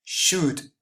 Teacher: L is mute it doesn't sound at all